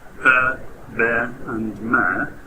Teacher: Bilabial consonants are produced by both lips coming into contact with each other.